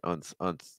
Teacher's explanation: sometimes I see students pronouncing more of a schwa sound on the second syllable, more like unth, unth.